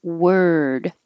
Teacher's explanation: your tongue comes back for the r and then to the D position and that little Mark after the d means hold it there